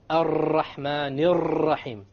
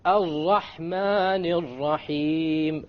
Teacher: Rather, we say ra. One precise ra. And we don't roll it to produce multiple ras like this.